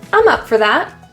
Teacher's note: Notice for is reduced to a quick fur.